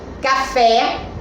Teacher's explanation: café é uma palavra oxítona acentuada que a sílaba tônica é a última que é a sílaba sé e nós também podemos perceber que